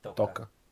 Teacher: the accent is on the first syllable, not the second.